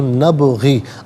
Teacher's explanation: با ساکن ہوگا لیکن یہاں قلقلہ ہوگا تو نبغی، آواز لوٹتی ہوئی محسوس ہونی چاہیے